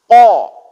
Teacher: pangkal lidah bertemu dengan langit-langit atas yang masih berdaging, itu mengeluarkan huruf qaf